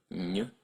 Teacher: N as in baignoire, a cross between an N and a Y